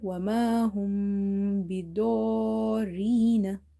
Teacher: After mim sakin, which is silent mim, if you see letter ba, then you have to do the gunna or nasalization in this mim sound. Wama hum, ba kasra bi, dod, alif and ra we will read together.